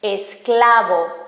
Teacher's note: tener la sílaba tónica en la penúltima sílaba por ejemplo esclavo la sílaba tónica es cla o sea es la penúltima